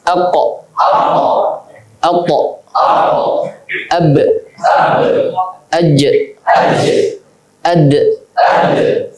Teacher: Pendapat yang pertama mengatakan qalqalah tidak terkait dengan harokat apapun. Jadi ketika melafalkan qalqalah aqo, ini bukan fathah yang keluar